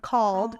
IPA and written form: kɔld (cold)